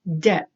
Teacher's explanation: The next one, debt. So this is a little tricky because it has a B in it, but the B, you do not pronounce the B. It is pronounced like the word bet, but you put a D in front of it and it's going to be debt.